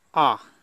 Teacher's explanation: जिन स्वरों के उच्चारण में जिह्वा का कोई भी भाग ऊपर नहीं उठता, मध्य स्वर कहलाते हैं। जैसे आ का उच्चारण करने पर जिह्वा का कोई भाग ऊपर नहीं उठता, इसलिए इसे कहते हैं मध्य स्वर।